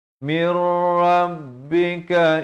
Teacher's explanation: Ini idgham bila gunnah, bukan min tapi mir, terus masuk tanpa dengung.